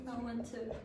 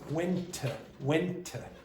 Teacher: when you have two T's together, like this, I went to. one of them disappears and that becomes longer. And it's pronounced went to.